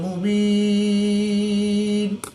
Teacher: وقف کی حالت میں یا مدہ کے بعد نون کی 2 زیر کو ساکن کر دیں گے تو یہاں پر وقف کی حالت میں مد عارض ہوگی، 2 سے 3 الف تک کھینچ کر پڑھیں گے